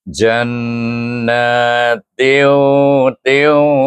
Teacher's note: tanwin ini kita idghamkan kepada huruf wau dengan idgham maal ghunah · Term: idgham naqis